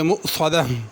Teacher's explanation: مؤصدہ میں حمزہ ہے، اس کو موصدہ نہیں پڑھنا، واو کی آواز نہ نکلے بلکہ حمزہ ادا ہو، صاد کو پر کرنا ہے، اگر رکیں گے تو اس کو ہا پڑھیں گے مؤصدہ